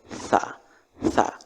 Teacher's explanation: lidah kita itu ada di ujung gigi agak keluar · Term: huruf tsa